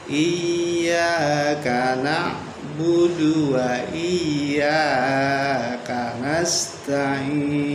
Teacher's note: Ya kedua terlalu panjang, sering terjadi sampai 3 atau 4.